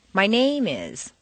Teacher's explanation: If you stress name, it sounds as if you're going to continue with more personal information.